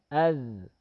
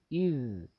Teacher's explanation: حمزہ ذال زبر اذ، حمزہ ذال زیر اذ، حمزہ ذال پیش اذ. الذال میں صفت رخوت ہے، اس میں آواز جاری ہوتی ہے